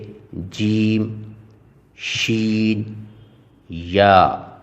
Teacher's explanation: جیم شین یا ادا ہوتے ہیں زبان کے درمیان اور تالو سے